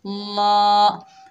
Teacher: जैसे नल, वलाकिन नल। लाम के ऊपर खड़ा ज़बर है, एक अलिफ की मिकदार खींच कर पढ़ेंगे। ला। हा के ऊपर ज़बर है, बगैर खींचे पढ़ेंगे।